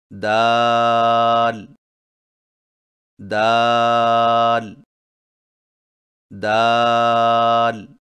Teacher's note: دال کی ادائیگی میں زبان کی نوک کو سامنے والے اوپر کے دو دانتوں کی جڑ سے لگا کر باریک آواز میں پڑھیں، یعنی دال دال دال۔